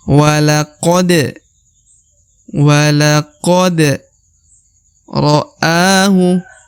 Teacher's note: Walaqad, ini 1 harokat. Walaqo, kemudian huruf da dibaca pantul ya, karena berharokat sukun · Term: huruf pantul